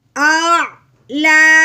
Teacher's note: लाम के ऊपर खड़ी ज़बर है जिसकी वजह से हमने इसको एक अलिफ के बराबर लंबा करना है